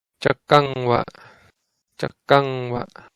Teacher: Sorry, the stress is on the kam.